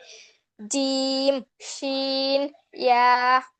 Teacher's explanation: জিহ্বার মধ্যখান তার বরাবর উপরের তালুর সঙ্গে লাগিয়ে